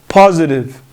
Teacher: Like I said earlier, when T comes between two vowels, we pronounce it like a sound between R and D